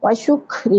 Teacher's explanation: ساکن کاف ہے اس لیے اس کو کھ کر کے پڑھیں گے۔